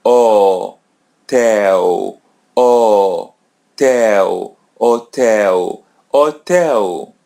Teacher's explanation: We don't pronounce it. Letter L comes in the end, so pronounce it as W. · Letter H comes in the beginning, so it's silent. We don't pronounce it.